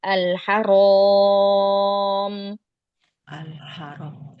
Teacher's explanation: Saya angkat lagi pangkal lidahnya biar tebal.